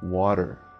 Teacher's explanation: Quando eu tenho esse T no meio da palavra, então, um T simples ou T duplo, não importa, o americano ele vai ter esse som de R. Você vê, inclusive, na forma de pronunciar, que o fonema ele é muito parecido com a letra R.